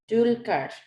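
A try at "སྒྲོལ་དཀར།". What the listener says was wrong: Julkar. Yeah, which is Tara again. Julkar, not Dulkar. Julkar.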